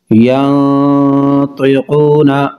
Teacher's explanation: نون ساکن کے بعد طا حروف اخفاء، ینطقون غنہ کر کے پڑھیں گے۔